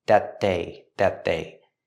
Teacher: We see the T at the end of that linked to the next sound, that they. Make a stop T with that at the end and link to the next word, they.